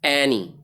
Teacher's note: اب اینی میں اے کو اونچی آواز سے پڑھیں گے